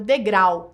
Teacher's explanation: No caso aí, este U é o que a gente chama de semivogal. A palavra degrau termina num ditongo decrescente, AU. Então, vogal mais semivogal.